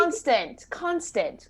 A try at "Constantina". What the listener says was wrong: It's Constantina. There's a couple extra syllables that you're missing there.